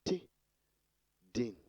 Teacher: And we have T, also plosives because in the course of releasing the air, we have complete release of air, and they are alveolar because the tip of the tongue touches the alveolar ridge in the course of production